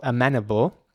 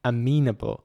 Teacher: so they pronounce the E right here quite short, amenable. And in British English, this is dragged out. This is elongated. This is pronounced very long, amenable, for some reason.